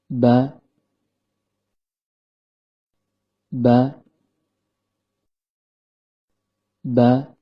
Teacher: Huruf ba keluar dari tempat pertemuan antara bibir bawah dengan bibir atas dan kondisi lidah dalam keadaan normal.